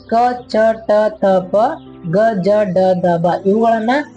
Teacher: ಕಡಿಮೆ ಉಸಿರಿನಿಂದ ಉಚ್ಚರಿಸಲ್ಪಡುವ ಅಕ್ಷರಗಳನ್ನ ಅಲ್ಪ ಪ್ರಾಣಗಳಂತೇಳಿ ಕರಿತೀವಿ. ಇಲ್ಲಿ ವ್ಯಂಜನಗಳಲ್ಲಿ ಪ್ರತಿ ವರ್ಗದ 1 ಮತ್ತು 3ನೇ ಕಂಬ ಸಾಲುಗಳು ಏನಿರ್ತವೆ ಅವು ನಿಮ್ಗೆ ಅಲ್ಪ ಪ್ರಾಣಗಳಾಗಿರ್ತವೆ.